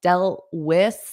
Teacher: So notice when I say dealt, when I have another word after, I'm just going to do a flap T. So I'm not going to push out the sound. So dealt with, I'll put my tongue in that position, but just not not push it out.